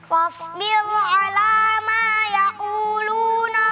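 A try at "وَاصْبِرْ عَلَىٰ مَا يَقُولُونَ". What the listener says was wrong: Wasbir. Ra di situ tebal atau tipis? Tipis. Tadi bacanya? Tebal.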